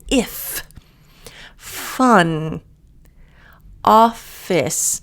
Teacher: So the F is like the V in the placement of the top teeth on the bottom lips, but there's air. So you should feel air coming out kind of towards the bottom.